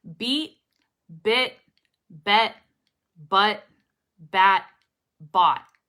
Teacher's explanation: i held the t i actually put it up and i didn't release it